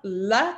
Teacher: Dental L tongue between the teeth